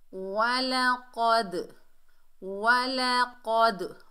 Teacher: Next पढ़ते हैं वलक़द, वलक़द, वाव के ऊपर ज़बर, लाम के ऊपर ज़बर, दोनों को बगैर खींचे पढ़ेंगे। क़ाफ हुरूफ़ इस्ताला में से है और इससे मोटा अदा करेंगे।